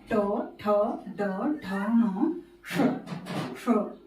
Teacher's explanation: मूर्धन्य श का उच्चारण होता है तालु के पीछे वाले हिस्से से।